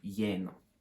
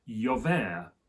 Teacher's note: They keep the L sort of, but only in the written. When they speak, you don't hear that at all. It becomes a y sound